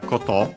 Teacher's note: accent on the last syllable